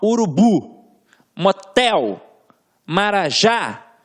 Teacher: A gente tem a última sílaba como tônica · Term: oxítona